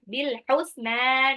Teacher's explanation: Bil husna ada alif lam qamariyah, alif lamnya dibaca jelas. Bil husna, nunnya panjang.